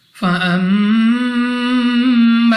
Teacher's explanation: میم مشدد غنہ کر کے پڑھیں گے، 2 سیکنڈ تک لمبا کرنا ہے۔